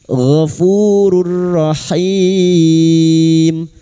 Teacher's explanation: Wallahu gofurur gofu fu di wu sukun dua harakat mad thabi'i gofurur rahim rur dumat tanwin bertemu ro idgam bila guna nun sukun atau tanwin yang bertemu dengan huruf lam atau ro masuk tanpa mendengung masuk pada huruf ro tanpa mendengung